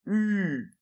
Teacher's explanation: On fait un petit peu comme si on faisait un OU, et en même temps on essaie de faire un I, et donc ça nous fait U. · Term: son U